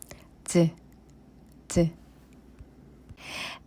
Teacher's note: Its sound is similar to 시옷 but has slight difference. When we pronounce 지읒, the tip of the tongue touches hard palate.